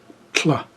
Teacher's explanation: And we're also going to be using our alveolar ridge. So we're taking the tip of our tongue, putting it up against our alveolar ridge. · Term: barred lambda